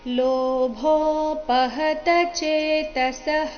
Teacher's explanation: ಇಲ್ಲಿ ಭೋ ಮಹಾಪ್ರಾಣ ದೀರ್ಘ ಬರಬೇಕು